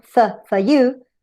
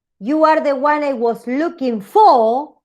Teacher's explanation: Pero, si yo digo, you are the one I was looking for, ahí voy a usar el strong, porque ahí lo estoy haciendo stranded position, está al final